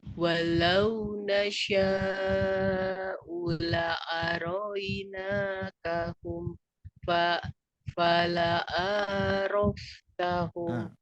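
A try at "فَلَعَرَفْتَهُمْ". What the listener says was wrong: A-nya kepanjangan. Tapi fala araftahum.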